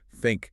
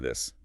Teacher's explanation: Is it between your teeth for think is it vibrating slightly for this?